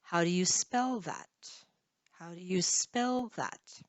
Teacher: in this sentence spell is probably the highest pitch